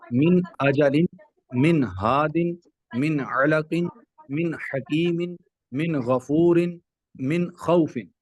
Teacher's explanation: تو یہاں پر ان تمام لیٹرز میں جو ہے وہ تمام ورڈز میں، کیونکہ نون ساکن کے بعد حروف ہلکی آیا تو اظہار ہوگا، نون کو بالکل عیاں واضح کر کے پڑھیں گے